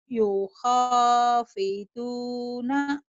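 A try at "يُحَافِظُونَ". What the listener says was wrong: Solawatihim yuha, bukan yuho. Yuhab. Kamu dari tadi yuham lulu. Yuhafiduna. Ha sama aku ketuker. Lam sama alif ketuker.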